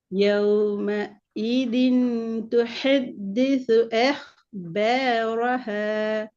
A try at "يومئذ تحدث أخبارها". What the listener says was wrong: பாரஹ. ஹ சவுண்ட் வரணும்.